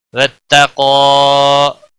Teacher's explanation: واتقوا، وقف کی صورت میں بھی 1 الف کے برابر ہی کھینچ کر پڑھیں گے، قاف کے اوپر کھڑی زبر ہے اس لیے، اور قاف کو موٹا بھی پڑھیں گے